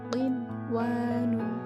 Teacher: Nah, di situ ada nun mati bertemu dengan huruf wawu, tapi dalam satu kalimat, maka nun matinya tidak dimasukkan ke huruf wawu, akan tetapi nun mati dibaca dengan jelas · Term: idhar wajib